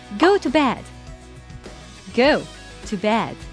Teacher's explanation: I stress the word go and bed. I didn't stress the preposition to.